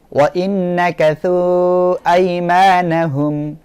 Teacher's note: মদের হরফের পরের শব্দে প্রথমে যখন হামজা আসবে তখন সেটা হবে মদ্দে মুনফাসিল এখানে তিন আলিফ করিয়া টানে পড়তে হবে